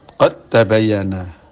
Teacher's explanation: yang kita dengarkan dalam bunyi huruf adalah ta, bukan dal. Musyaddada secara bertasdid. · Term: idgham